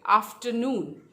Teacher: आफ्टरनून, third syllable पे stress है